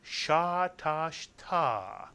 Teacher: And the third syllable is simply ta. Put the three syllables together and you get sha, tash, ta, with the accent on the last syllable.